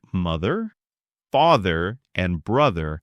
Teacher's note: for words like mother, father, and brother, the sound vibrates. You should feel a little buzz in your throat. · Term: vibrating th sound